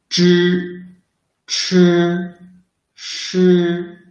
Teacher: They are pronounced by rolling up the tip of the tongue close to the hard palate. Zh should force the air out through the narrow channel between the tongue and the hard palate. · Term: retroflex sound